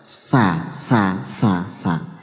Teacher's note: ujung lidah dan ujung dua gigi depan atas out Sasa Sasa Sasa jadi ndak sampai keluar ndak sampai uang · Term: Sin